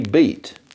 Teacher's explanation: Some of you have already started to say [bɪit]. Keep that going through [bəɪt] arriving at [bʌit] by 1700. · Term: great vowel shift